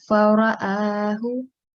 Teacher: On this ra, make sure, because ra is a thick ra, so you need to round it